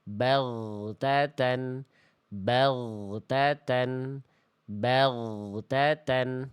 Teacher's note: Bag harusnya bag tuh enggak ada bunyi e di ujungnya.